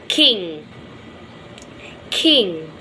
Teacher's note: mouth immediately after the heart belly movements vellum drop down and the back of the tongue makes a closure with vellum which is called velar closure